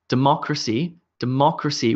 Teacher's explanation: with emphasis on the MA sound